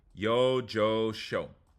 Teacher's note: the Y can sound like a Y, J, or she, just like the double L.